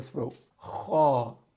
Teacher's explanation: Kha is at the top of the throat.